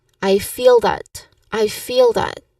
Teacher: While feel can refer to emotions, in this context, I feel that is often used to express a viewpoint or an intuition, something that feels true to you. So, the pronunciation tip is to link feel and that smoothly, almost as one sound